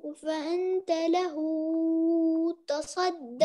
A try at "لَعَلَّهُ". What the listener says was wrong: ما تطول قوي كده. بص لعله وله بس حركتين. لعله يزكى فأنت له تصدى. ما في فهمت بس حركتين.